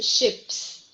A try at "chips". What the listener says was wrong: Yes, but it's not ships, but chips. Here, because of the CH, you pronounce chips.